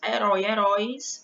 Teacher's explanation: o som vai ser aberto né quando a gente pronuncia com a boca aberta mesmo